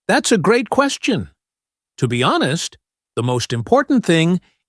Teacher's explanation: You might notice the speaker links that say together. They might put emphasis on great and important.